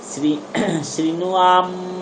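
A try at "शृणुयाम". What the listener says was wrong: হ্যাঁ শৃণুয়াম শৃণুয়াম দেবাः, শৃণুয়াম নয়, আম নয়, শৃণুয়াম। ময়ের পরে হলন্ত নেই না, আপনি তাহলে ওটা শৃণুয়াম বলবেন না।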